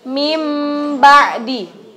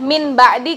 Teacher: Jadinya itu kita bacanya huruf mim tapi pakai gunnah ditahan dengan 2 ketukan. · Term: Iqlab